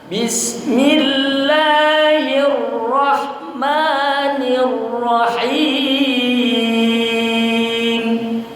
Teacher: Samakan bismillah la dengan ma, ya. Sama-sama mad tabi'i.